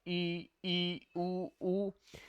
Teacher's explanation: जहां पे मुख आधा अर्थात कम खुला हुआ हो, जिन मुख के उच्चारण में मुख कम खुलता है, ई उ। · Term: संवृत